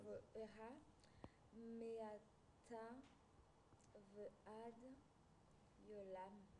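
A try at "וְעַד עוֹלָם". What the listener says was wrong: Alors, c'est pas Yolam, je vois pas de yod au début. Ayolam, il n'y a pas de A devant. Tu vois une voyelle A, toi? Comment il se prononce, Ain? Non, c'est pas Aï, j'entends Aï.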